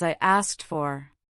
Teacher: It often comes out as I asked for. The ed in asked changes from a D sound to a T sound because of the following F.